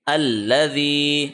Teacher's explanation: اچھا، ذال کے نیچے زیر ہے، یا کے اوپر جزم ہے، یا مدہ کا قانون لاگو ہوگا، جس کا مطلب ہے کہ زی کو ہم نے 1 سیکنڈ لمبا کھینچنا ہے۔ جب یا کے اوپر جزم آئے، پچھلے لیٹر کے نیچے زیر ہو، اس کو یا مدہ کہتے ہیں، اور زیر والے لیٹر کو ہم 1 سیکنڈ لمبا کھینچتے ہیں۔